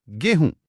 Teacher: बिल्कुल गोधूम में जो ध था वो बोलते बोलते ह बन गया। और जो म की ध्वनि थी वो नाक से होते हुए चंद्रबिंदु में बदल गई। गोधूम से गोहूम और फिर बन गया गेहूं।